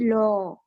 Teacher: বাতাসটা জিহ্বার দুপাশ দিয়ে বের হয়ে যাবে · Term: পার্শ্বিক ধ্বনি